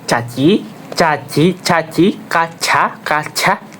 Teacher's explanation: Tengah lidah menyentuh langit-langit keras udara tertahan. Nah, udara tertahan kemudian dilepas dengan gesekan.